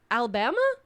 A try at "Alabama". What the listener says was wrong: Not Alla, just Alabama.